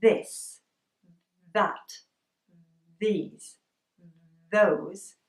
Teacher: it's not just the tip of my tongue it's more of my tongue that is touching my teeth